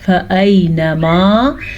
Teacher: یا ساکن ہے اور یا ساکن سے پہلے زبر ہے تو یہ یا لین ہے، اسے کھینچ کے نہیں پڑھنا، نرمی سے پڑھنا ہے اور لمبا کیے بغیر پڑھنا ہے۔